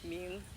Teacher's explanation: for name, which is mean, which is a rising tone